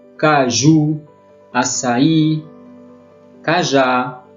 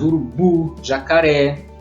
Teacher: A sílaba forte é a última, sempre. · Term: oxítona